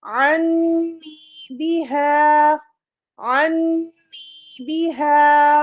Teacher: پھر عین کو نون مشدد سے ملایا جس میں ہم نے غنہ کرنا ہوتا ہے